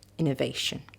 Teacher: you've got a weak syllable weak syllable stressed syllable and a weak syllable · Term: stress pattern